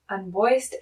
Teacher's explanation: because that last sound before ed is a s, we finish with a t sound